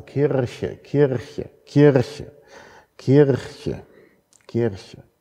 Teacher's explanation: Leute, die deutlich sprechen wollen, also tatsächlich professionelle Sprecher, bevorzugen ein uvulares R, einen uvularen Vibranten. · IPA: [ˈkʰiʀçə]